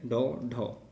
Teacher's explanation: ऐसे व्यंजन जिनके उच्चारण में जीभ पहले ऊपर उठकर मूर्धा को स्पर्श करें और उसके बाद यहाँ पर झटके के साथ नीचे को आए तो यह क्या कहलाते हैं उच्छिप्त व्यंजन कहलाते हैं। · तो ट वर्ग के जो व्यंजन हैं तो इनका उच्चारण करते समय यहाँ पर जो जीभ है पहले मूर्धा को स्पर्श करती है, उसके बाद झटके के साथ नीचे आती है। तो यहाँ पर मुख्यतः ड और ढ जिनमें बिंदी लगी होती है नीचे, इनको उच्छिप्त व्यंजन कहा जाता है।